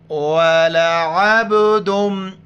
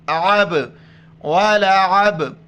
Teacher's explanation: عین کو گلے سے ادا کر کے با کے ساتھ ملائیں گے اور با پر کلکلہ کریں گے. کلکل کہتے ہیں لفظ کو جھٹکے کے ساتھ پڑھنا اور لفظ کے آواز کا لوٹ کے واپس آنا.